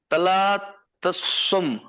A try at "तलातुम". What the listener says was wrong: तला तुम, तुम, तला तुम, तो के बाद सीधे मीम है, वो सिर्फ कैलीग्राफी की स्टाइल है जो